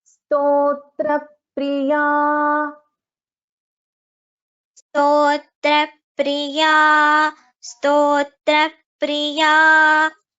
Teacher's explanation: Stotra, so tha gets doubled. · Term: Dvitvam